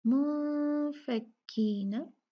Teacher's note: इस नून को हमने मिन नून के जैसे नहीं बल्कि छुपा के पढ़ना है। इख्फा मतलब खुफिया, नून को छुपा के पढ़ना है, मुनफक्कीना।